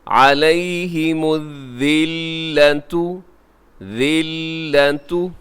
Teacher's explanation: لام کے پر تشدید ہے، آپ اسے ذرا مضبوطی سے پڑھیے گا